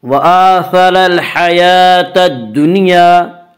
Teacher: را کے اوپر زبر ہے، را کو پر پڑھیں گے